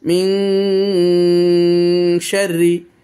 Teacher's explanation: এই যে দেখেন, এই যে শিন, অর্থাৎ ইকফার অক্ষর এসেছে। নুন সাকিনের পর ইকফার অক্ষর এসেছে, এই জন্য ইকফা হয়ে গেছে এবং গুন্না হয়ে গেছে, নাকে পড়তে হয়েছে। নুন সাকিনটা আমি নাকে পড়েছি।